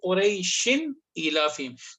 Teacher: we didn't take the sound in the nose. We clearly said Qurayshin. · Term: izhar